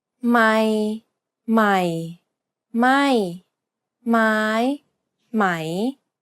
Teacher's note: middle low falling high and Rising tones